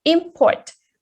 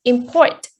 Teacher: if it's a noun, the stress is put on the first syllable, but if it's a verb, the stress is put on the second syllable